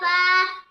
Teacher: 14 নম্বর মাখরাজ নিচের ঠোঁটের পেট সামনের উপরের 2 দাঁতের আগার সঙ্গে লাগাইয়া